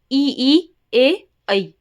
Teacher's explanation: जीभ के अगले हिस्से से जो बोले जाते हैं वो हमारे क्या कहलाते हैं, अग्र स्वर कहलाते हैं